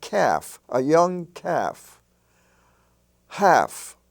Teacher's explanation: such words as self and golf you have calf and half they're spelled with l f but the l does not pronounce